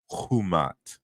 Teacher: that K was aspirated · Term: aspiration